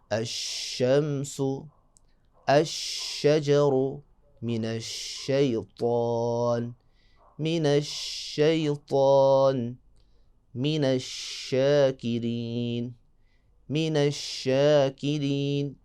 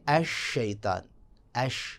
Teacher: جب بھی آپ نے شین کو ادا کرنا ہے تو آواز آپ کی منہ میں پھیل جائے گی۔ تفشی یعنی پھیل جانا، جیسے آواز منہ میں پھیلے گی تو شین میں خوبصورتی پیدا ہوگی۔ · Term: صفت تفشی